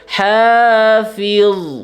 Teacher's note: Fa-nya tetap dibaca tipis, zo-nya yang dibaca tebal ya. · Ah, itu zo-nya huruf tebal ya. Zo-nya di situ adalah huruf tebal, jadi dibaca dengan tebal juga